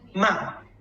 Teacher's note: the last tone is down. Yeah, just from high to low.